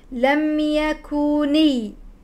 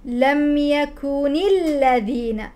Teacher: كفروا من اهل الكتاب والمشرك لم يكوني لم تمسكي على الميم الميم ساكن لم يكوني النون مكسوره ثم انطلق الى اللام المشدده